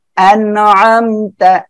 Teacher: কি আইন রয়েছে আইনটা গলাটা চেপে উচ্চারণ হবে